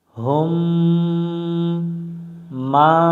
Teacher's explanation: শুরু করা যাক হু মিলবে মিমের সাথে হুম মিম সাকিনের বাম পাশে মিম অক্ষর পাইলে মিমের উপর তাসদিদ ধরে গুন্না করে পড়তে হয়